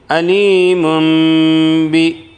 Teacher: تنوین کی آواز کو میم سے بدل کر غنہ اور اخفا کے ساتھ پڑھیں گے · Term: اقلاب